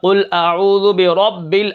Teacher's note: اب یہاں پر را موٹی ہے کیونکہ را کے اوپر زبر ہے